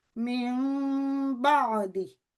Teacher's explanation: تو یہ من بعدی کی بجائے ہو جائے گا من بعدی۔ تو نون ساکن اس کی آواز کو ہم نے میم میں بدل دیا۔ تو یہی جو رول ہے یہ اقلاب کا رول کہلاتا ہے۔